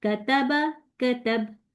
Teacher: कताबा में देखिए कताबा में काफ बारीक हो गया